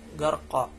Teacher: Membacanya dengan cara diayunkan 2 harokat serta menghilangkan bunyi n pada pembacaan harokat fathah tain. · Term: mat iwat